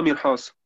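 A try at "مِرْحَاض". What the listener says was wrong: Mirhas wäre, wenn der Punkt nicht da wäre.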